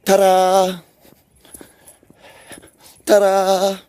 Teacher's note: It's actually the word's spelled with a D, but you're pronouncing it like you're rolling your R.